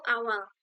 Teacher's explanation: Pada kata awal, fonem L muncul di akhir kata dengan mekanisme produksi bunyi yang serupa. Ujung lidah menyentuh alveolar ridge atau gusi di belakang gigi atas, sementara udara melewati sisi-sisi lidah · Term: lateral